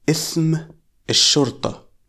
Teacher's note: qaf is usually pronounced as a glottal stop or hamza, not as a qaf